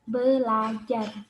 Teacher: perubahan fonem R pada prefiks ber menjadi fonem L. Terjadi apabila bentuk dasar akarnya fonem ajar.